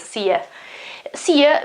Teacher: it's the American version in which you isn't always pronounced you, but it's pronounced ya